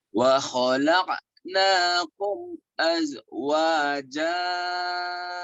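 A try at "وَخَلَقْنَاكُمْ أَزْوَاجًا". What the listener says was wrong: Udah bagus, cuman zainya kurang rapuh, sama kopnya kurang kol-kolah nih ya. Bapak lihat mulut saya Bapak ngikutin mulutnya nih, lihat ya. Wa khalaqnakum azwaja.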